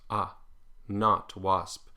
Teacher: it's basically an AA with a rounded lips not wasp in general American dialects use the open unrounded version of this